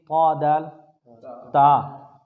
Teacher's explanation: ثنایا علیا کی جڑوں سے لگتی ہے، تو طا دال اور تا ادا ہوتے ہیں